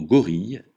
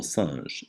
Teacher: Le G se prononce gu comme dans gorille. Jamais jeu comme dans singe.